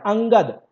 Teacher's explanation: अनुस्वार जिसका हवा केवल नाक से निकलता है